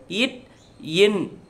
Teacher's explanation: நாவின் நுனி அன்னத்தின் நுனியை பொருந்துவதால் பிறக்கும் எழுத்துக்கள்